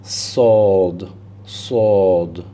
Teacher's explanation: With the sod, although they come at the point of exit at the same point, both of these seen and sod, the sod is a heavy letter, and so therefore you have to lift the back of your tongue towards your palate to say that.